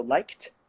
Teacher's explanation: k is unvoiced, and so you're going to have a t, so liked. Then you've got lived.